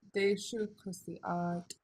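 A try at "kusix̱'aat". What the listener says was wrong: You need an X on it.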